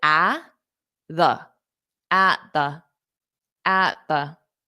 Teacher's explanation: we don't need to pronounce two T's because when you say it quickly when you hear one t that t will work for both the words